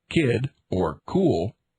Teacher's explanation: The heavily aspirated sound k